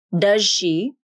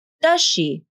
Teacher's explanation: Does she with a voiced ZH consonant, or does she with a voiceless SH consonant?